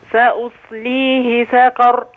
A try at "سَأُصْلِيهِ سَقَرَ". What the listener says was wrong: خلي بالنا أنها قاف. سأصليه سقر.